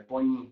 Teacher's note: Na verdade é a letra E, mas não é som de E, tá? É um som de I, aquilo ali é põe, é um somzinho de I mais fechado que a gente tem.